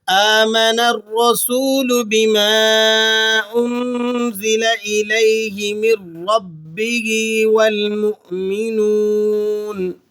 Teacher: والمؤمنون تو حمزہ کی وجہ سے آپ اسے جھٹکا لگا کے پڑھیں گے اور نون کو وقف کرتے وقت آپ نے ساکن کر دینا ہے۔